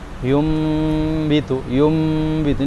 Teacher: kalau itbak ditutup cuman enggak terlalu kuat tekanannya